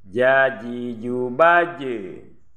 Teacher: Jim ini makhrajnya di tengah lidah dengan langit-langit.